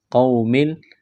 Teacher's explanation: واو لین ہے، اس کو کھینچنا نہیں ہے